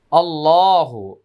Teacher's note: আল্লাহ শব্দের পূর্বে জবর আসছে, তাই আল্লাহ শব্দের লামটা মোটা হবে, আর আল্লাহ শব্দের মাঝখানে সবসময় খাড়া জবর থাকে, এক আলিফ টান, এটা মনে আছে সবার।